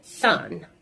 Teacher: This is a voiceless sound. It takes place at the alveolar ridge, and it's a fricative sound.